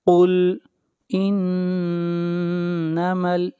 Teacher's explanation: نون کے اوپر شد ہے، غنہ ہوگا، آواز ناک میں جائے گی